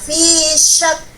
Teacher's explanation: huruf kaf ketika kita waqaf, kita tunaikan syiddah, lepas mahrajnya, kita keluarkan percikan napas kita. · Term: waqaf nabar